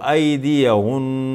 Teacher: تھوڑا سا غنے کو ظاہر کریں گے وقف کرتے وقت